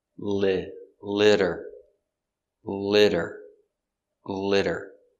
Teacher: the t is between two vowels so we use the d sound again